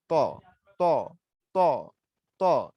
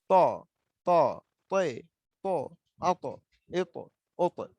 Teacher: দেখেন মুখটা আমার তর উচ্চারণের সময় গোল হয়ে যায় এবং মুখটা ভরে।